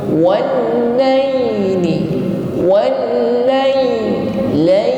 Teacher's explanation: Wan huruf wa dihimpun ke depan, langsung ditekan pada huruf lam yang bertasydid.